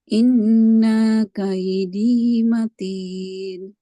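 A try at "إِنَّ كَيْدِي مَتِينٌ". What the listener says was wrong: Nah, ini jangan panjang. Inna kaidi. Ya, inna kai. Dah jadi panjang dia.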